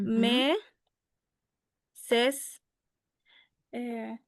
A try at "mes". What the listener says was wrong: Ojo con la S final.